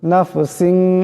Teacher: এখানে সিনের নিচে দুই জেরের তনবিন, এরপরে শিন আসছে, ইকফার গুণা হয়ে যাবে, আকারের পরিমাণ গুণা হবে